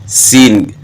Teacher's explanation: سین اس میں سیٹی کی مثل آواز پیدا ہوتی ہے سین. اب اس میں سیٹی کی مثل آواز کیوں پیدا ہو رہی ہے کہ نیچے دانتوں کے ساتھ زبان بھی ٹچ ہو رہی ہے.